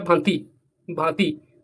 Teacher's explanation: तो इसका उच्चारण जो है मुंह और नाक दोनों से हो रहा है। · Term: अनुनासिक ध्वनि